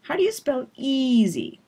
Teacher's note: It's always the vowel that gets all that stretching and focus. So how do you spell gets really quickly reduced. It's softer, it's faster, it's shorter, and easy is longer and louder. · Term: peak word